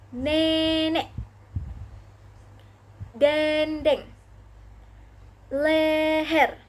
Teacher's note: E lagi dengan madia bawah depan dengan kondisi mulut semi terbuka menghasilkan kata nenek dendeng leher.